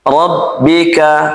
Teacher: Ketika ro fathah maka dibaca tebal.